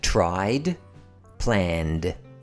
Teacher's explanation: word ends in a voiced consonant sound as in plan, we use the d sound.